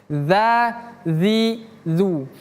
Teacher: ujung lidah bertemu gigi seri atas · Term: huruf dzal